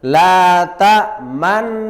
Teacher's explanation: Isyarat bunyi dhammahnya nun yang dibuang. Seakan-akan membaca la ta'manuna, nu. · bacaan ishmam, artinya bibir mecucu atau moncong di tengah-tengah dengung sebagai isyarat bunyi dhammah